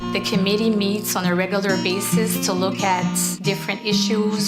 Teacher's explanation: there's quite a nasal sound going on the further north you go the stronger it gets